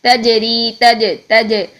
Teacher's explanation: پھر آگے دیکھیے جیم کو لیتے ہیں، تجری، تج، یہ جو آواز جو ہے ہل رہی ہے، یہ کیوں ہل رہی ہے کہ ہم نے جیم میں سختی اور قوت کے ساتھ پہلے اپنے مخرج میں ٹچ کیا ہے، ٹچ کرنے سے کیا ہوا کہ جیم میں آواز رک گئی تھی، تج، یہ رک گئی۔